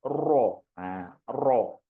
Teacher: Jadi suaranya akan mengalirnya di tengah lidah. Mengalirnya menyimpang suaranya ke tengah lidah.